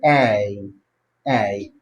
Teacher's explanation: you have to glide it. You have to move from one vowel to another vowel. Alright? So you have to pronounce the first sound first, E, before you go to the next I. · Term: diphthong